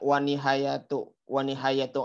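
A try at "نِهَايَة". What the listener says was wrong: Nihaya, jangan dulu dibaca ujungnya, jangan dulu dibaca ujungnya, netralkan dulu.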